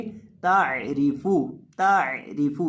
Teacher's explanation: ता को बारीक करके पढ़ेंगे और इसके साथ आइन है, आइन को बीच हलक से अदा करेंगे और रा को भी बारीक करेंगे और फा को होंठों को गोल करके पढ़ेंगे।